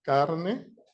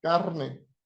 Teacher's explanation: It can be produced as a tap, carne. It could be produced as a trill, carne. And in Caribbean, it can be produced as a lateral, calne.